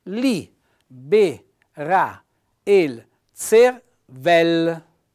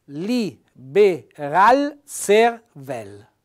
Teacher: quando c'è lo scontro di due vocali la vocale che vien dopo cade